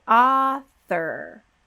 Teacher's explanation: we go straight from that th sound into the r